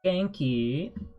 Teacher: you have the rising intonation to denote question.